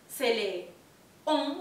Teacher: Como una nasal, como una O nasal, y se escribe O-N-T.